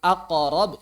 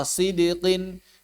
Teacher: kalau misalnya sebelumnya fathah seperti kata aqarab ya Mirip fathah tapi kalau sebelumnya kasr seperti sidqin maka mirip kasr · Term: Qalqalah